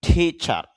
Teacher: টিচার শেষে রটা অল্প sound হবে